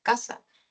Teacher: El ceseo es cuando las personas ya no pronuncian la diferencia entre sa de casa y za de caza, sino que todo lo reducen en una S